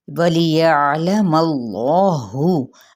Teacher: جلالہ کا لام پر پڑا جائے گا، کیونکہ پیچھے اپنی شرط کو پورا کر رہا ہے، یعنی فتحہ یا زبر کو